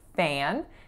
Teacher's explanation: our final word, fan, is that nasalized a sound